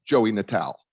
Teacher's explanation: a lot of italian families dropped the vowel pronunciation